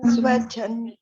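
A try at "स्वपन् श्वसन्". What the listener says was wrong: Not chan chan chan chan and all. You have to read properly. Swapan Shvasan. All are Shatranta.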